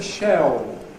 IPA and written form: ʃeo (shell)